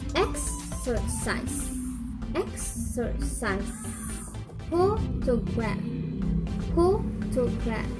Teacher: Primary stress on the first syllable and secondary stress is on the third syllable. The other syllables are unstressed.